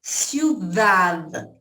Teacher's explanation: ciudad termina com D mudo